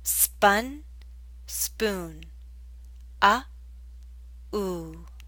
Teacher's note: The oo in spoon is longer.